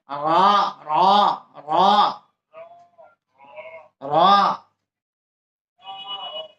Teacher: জিহ্বার আগাটা উপরে তালুর সঙ্গে বাঁকা হয়ে লাগবে।